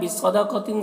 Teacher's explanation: صاد اور قاف دونوں حروف مستعلیہ میں سے، دونوں کو پر پڑھنا ہے